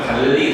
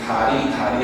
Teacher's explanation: 달리 하면 위로 올라가 다리 하면 어때 아래로 내려가